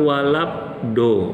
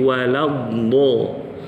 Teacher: Bapak bukan walab do, bukan walab do, tapi waladdo. Nah gitu, jadi bibirnya jangan ditutup.